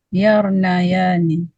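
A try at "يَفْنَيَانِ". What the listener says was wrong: Bukan yar, itu nggak ada roknya.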